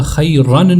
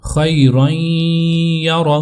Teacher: جو نون ساکن کی آواز تھی اس کو ہم نے ہٹا کر یا کی آواز اس میں مدغم کر دی، تو ہوگا خیرن یرہ۔ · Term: ادغام